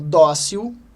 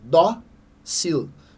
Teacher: Uma palavra de sílaba, onde a penúltima é a mais forte, dócil. Então, é uma paroxítona terminada em L.